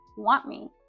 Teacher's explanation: we drop that te at the end of want as well